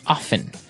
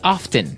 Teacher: they kind of leave out the strong T sound